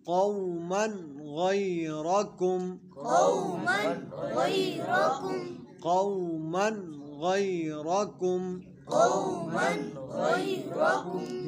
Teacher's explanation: تنوین کے بعد حروف حلقی میں سے غین آئے تو اظہار ہوتا ہے، یعنی غنہ نہیں کریں گے